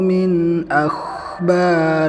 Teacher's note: Ketika pengucapan huruf kha kita tunaikan rikhwahnya, jadi tidak terputus dengan ba. Contoh yang salah seperti ini, min akhbarikum, nah itu terputus, jadi tidak menunaikan sifat rikhwahnya kha.